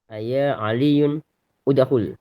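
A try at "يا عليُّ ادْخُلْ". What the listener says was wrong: Bukan, enggak pakai tanwin. Aya Ali yudkhul, langsung ini hamzah wasol, enggak pakai harokat, dihapus. Dikoreksi bukunya, dihapus harokat udkhul hamzahnya.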